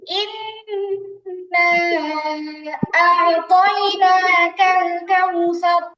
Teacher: হামজা আইন জবর বলার সময় কিন্তু ঠোঁট গোল হবে না, কেমন ঠোঁট কিন্তু গোল হবে না, ঠোঁট স্বাভাবিক থাকবে, উচ্চারণটা নিচের দিকে থাকবে।